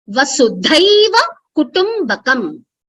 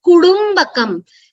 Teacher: See, what is happening with Kutu, when you're saying Kutumbakam together, instead of saying Karkasha Alpa Prana Kutu, it is going to Kudumbakam, which is a Mrudu Vyanjana.